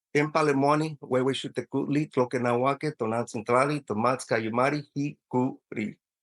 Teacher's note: we emphasize on the second to the last vowel